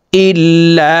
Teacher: মধ্যে মুনফাসিল 3 আলিফ টানিয়া পড়িতে হয়।